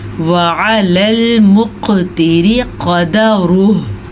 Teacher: क़ाफ पे कलकला हो रहा है, रा बारीक पढ़ेंगे